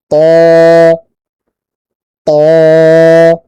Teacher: তটা একটু মোটা, এই জন্য আপনার জিহ্বার গোড়াকে উপর দিকে তুলতে হবে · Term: ত মোটা